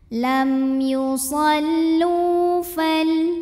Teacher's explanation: Lu mad tabi'i dhahiri karena ada waw sukun yang sebelumnya berbaris dhammah, maka huruf lam kita panjangkan 2 harokat.